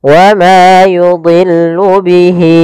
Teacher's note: Untuk panjang hi-nya adalah 4 harakat. Wa ma yudhillu bihi, ya, 4 harakat baru pindah ke i. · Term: mad silah tawilah